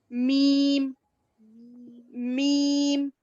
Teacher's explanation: बा, होठ ही है मगर उसके अंदर का गीला हिस्सा एक दूसरे को लग रहा, बा। मगर मीम, बंद होठों के खुश्क हिस्से से, दोनों बंद होठ है मगर इसका सूखा हिस्सा मिल रहा, मीम मीम, ठीक है?